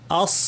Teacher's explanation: জিহ্বার সামনাটা একই জায়গায় লেগেছে, কিন্তু মাঝখান এবং পেছন উঠে গিয়ে আওয়াজকে উপরে ঠেলে দিচ্ছে, ভারী আওয়াজ হবে। আস, আওয়াজ উপরে উঠে যাচ্ছে।